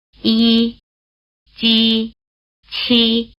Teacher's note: they're pronounced with the tongue in the position for the vowel E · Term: palatal consonants